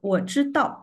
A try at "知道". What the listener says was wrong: yeah, your tongue a little bit back,